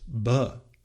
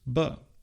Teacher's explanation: there's also an aspirated voiced ber, which contrasts with unaspirated voiced ber. This ber is, of course, a sound that doesn't occur in English at all.